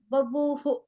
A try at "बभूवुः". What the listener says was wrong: Babu, buhu. No. I think you are not saying the last letter bu. It is babu, buhu.